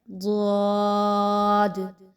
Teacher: दद की अदायगी जो है वह खूब मोटे अंदाज में की जाएगी गोल मुंह को गोल करके की जाएगी